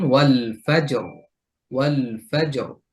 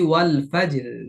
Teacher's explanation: জিমে কলকলা করে রটা মোটা